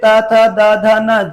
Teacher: दांत जो है वो जीभ को रोक रहे हैं। अगर दांत नहीं होंगे तो जीभ बाहर निकल जाएगी।